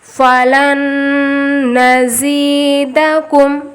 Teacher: یہاں پہ نون ساکن کے بعد نون آیا، ادغام ملغنہ ہوگا